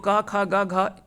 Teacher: ये सभी जो होता है वो कंठ से उच्चारण होता है।